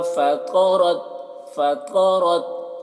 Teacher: तो को मोटा करके पढ़ना है और रॉ को भी मोटा करके। फ़तरत, रा ता में कलकला ना होने पाए, इसका ख्याल रखना है।